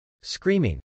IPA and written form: skrˈimɪŋ (screaming)